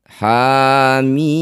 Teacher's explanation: Huruf ha pertama berharakat fathah panjang. Ini disebut bacaan mad thobi'i. Panjangkan dua harakat. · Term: mad tabi'i